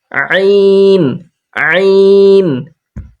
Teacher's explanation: কণ্ঠনালীর অর্থাৎ হালকের মাঝখানটা হালকা চিপে আমরা পড়বো